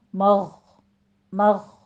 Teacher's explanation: غین کو پر پڑھیں گے اور اس پر قلقلہ بھی نہیں کرنا